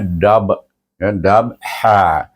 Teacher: Dabha, bila dia bersambung dengan ha itu, qalqalah itu bunyi perlahan, iaitu qalqalah sughra dipanggil.